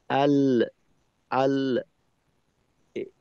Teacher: লামের মাখরাজে আমি আওয়াজটা কিছু সময় ধরে রাখলাম আল, যখন পৃথক হইলাম লামের মাখরাজ থেকে তখন একটা অতিরিক্ত আওয়াজ হইল আল, ল, এইটা অতিরিক্ত আওয়াজ।